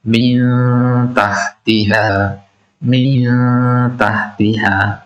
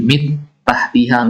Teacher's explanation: diikhfakkan huruf nun itu disamarkan artinya ke dalam huruf yang kedua huruf Ta